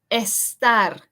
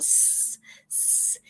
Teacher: practice putting emphasis on the first S. So you kind of want to hiss like a snake.